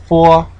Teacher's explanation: Okay, meaning specifically we're using both lips when we're articulating the sound, bilabial. Okay, the fo is a little bit different in that we're using the bottom lip and the upper teeth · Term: labiodental